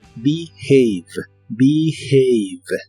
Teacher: La H de esta palabra se pronuncia como una J suave, y la segunda parte no se pronuncia have, sino have.